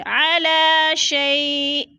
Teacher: شیء، شیء یا ساکن سے پہلے شین کے اوپر زبر ہے تو ادھر جالین ہے، جالین کو ہم نے لمبا بھی نہیں کرنا اور جھٹکا بھی نہیں دینا، اور وقف کی صورت میں شیئن 2 زیر تنوین کو حمزہ ساکنہ میں بدل کر پڑھیں گے، یعنی تھوڑا سا جھٹکا دے کے پڑھیں گے